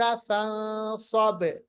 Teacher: बा पे कलकला होगा।